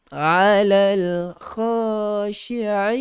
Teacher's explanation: Sifat tafashi, hamburan, berhambur kita punya suara keluar pertengahan lidah.